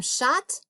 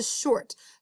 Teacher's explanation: the o was making the ah sound but now that we've wiggled the r in there it's making the or sound